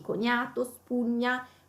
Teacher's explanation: Quindi sembra quasi che nella pronuncia della gn ci sia una i